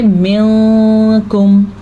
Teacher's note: یہاں پہ ہم نون کی آواز کو چھپائیں گے بھی اور غننے کی کیفیت بھی پیدا ہو جائے گی